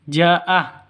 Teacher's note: Karena mad wajib muttasil harus lima ketukan.